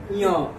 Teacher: ञ बोलिएगा तो नाक से इसका थोड़ा-थोड़ा देखिएगा कि नाक से आवाज आएगा